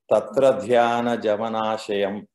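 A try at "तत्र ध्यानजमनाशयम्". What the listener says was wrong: Excellent.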